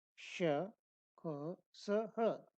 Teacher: इनका उच्चारण वागिंद्री के कुछ बंद रहने पर होता है। इन वर्णों के उच्चारण में एक प्रकार का घर्षण होता है, इसलिए इन्हें ऊष्म वर्ण कहते हैं।